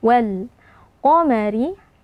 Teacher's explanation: alif lam bertemu dengan huruf qof yang merupakan huruf qamariah alif lamnya dibaca dengan sukun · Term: alif lam alqamariyah